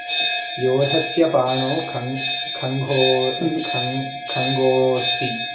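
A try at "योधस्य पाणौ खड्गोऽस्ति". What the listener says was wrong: Khanga we have not studied. Where is Khanga? There is no Khanga word in Sanskrit. Nor we have studied it. Is there Khanga? Is it Khanga or Khadga? What is the difference? What is the difference between Khadga and Khanga? This is Khanga. This is Khadga. Difference?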